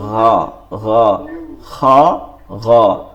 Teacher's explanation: খ এবং গইন হালকের শেষ হইতে খ গইন উচ্চারিত হয়। মনে রাখবো আমরা খ গইনটা নরম করতে হবে, নরম করতে হবে, অর্থাৎ গইনকে গইন বলা যাবে না, গইনকে গইন বলতে হবে, গাইন, গাইন নরম, গা, গা, খ, গ।